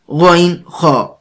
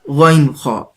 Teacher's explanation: غین، خا، یہ ادنا حلق سے ادا ہوتے ہیں۔ ادنا حلق کا وہ حصہ ہے جو منہ کے قریب ہے۔